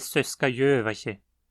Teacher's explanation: Já em Söskajövache, o acento cai sobre a sílaba Jö.